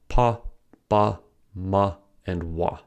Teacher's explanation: Bilabial. Bilabial consonants refer to consonants that are produced using both lips. Bilabial means two lips.